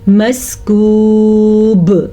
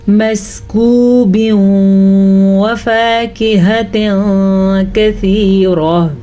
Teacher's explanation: رکیں گے تو قلقلہ ہوگا، نہیں رکیں گے تو ادغام بالغنہ ہوگا